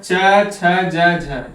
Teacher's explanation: स्पर्श संघर्षी। इसमें स्पर्श के साथ हमें थोड़ा सा संघर्ष का सामना करना पड़ता है। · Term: स्पर्श संघर्षी व्यंजन